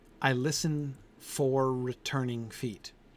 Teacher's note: the double r like r at the end of the word for and then the r at the beginning of the word returning it's almost impossible not to blend those two words together when